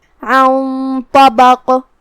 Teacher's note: تو ہم یہاں غنہ کو بھی بھاری آواز میں ادا کریں گے، کیونکہ طا کو ہمیں بھاری آواز میں پڑھنا ہے۔ عن طبق، کلمت طبق میں یہاں بھی ہم حرف القاف پہ رکیں گے، تو اس پہ جزم سے رکیں گے، تو ہمیں قاف کو ہلاتے ہوئے یہ کلمہ کو ادا کرنا ہے۔